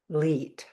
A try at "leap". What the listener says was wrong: Leap. Like you're jumping, a leap, not leet. Leap. No, it's a leap. Like you're jumping a leap.